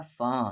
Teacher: نون ساکن کے بعد صاد ہے اور صاد حروف اخفا ہے تو فن نہیں ہوگا